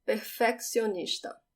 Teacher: we spell it the same way as in english but the emphasis is at the end